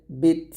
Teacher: আমি কিন্তু প্রত্যেকটা লাস্টের বাতাস বের করতেছি কারণ হচ্ছে তা হচ্ছে হামসের হরফ